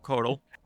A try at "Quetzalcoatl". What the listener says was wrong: Actually, it's Quetzalcoatl. The L is silent. Just say Quetz or Ketz.